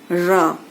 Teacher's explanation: लुंठित ध्वनि क्या है कि जिन ध्वनियों के उच्चारण में जिह्वा बेलन की तरह लपेट खा करके यानी मुड़ जाती है, बेलन की तरह लपेट खाकर तालु का स्पर्श करती है, और जिह्वा की जो नोक है वह वर्त्स पर बार बार ठोकर मारती है, तो ऐसी जो ध्वनियां होती हैं वो लुंठित कहलाती हैं, जैसे र।